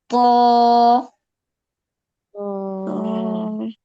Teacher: জিহ্বার আগা সামনের উপরের দুই দাঁতের গোড়ার সঙ্গে লাগবে